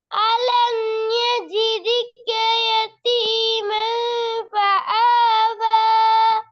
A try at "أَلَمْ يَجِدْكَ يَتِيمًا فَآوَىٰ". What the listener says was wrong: ஃபஆவாங்கிறது பிழை. ஃபஆ இல்ல. فآوى